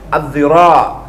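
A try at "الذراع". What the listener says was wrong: Az-zira', pakai za.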